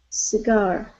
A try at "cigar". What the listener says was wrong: Yes, we bounce off that very beginning part of the word into R.